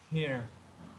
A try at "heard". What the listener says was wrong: So you will pronounce this with a D. So you pronounce this as heard. Heard.